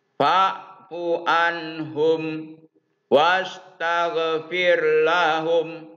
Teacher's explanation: Mim mati bertemu dengan waw. Ini berkenaan dengan izhar safawi. Jadi mimnya harus dibaca jelas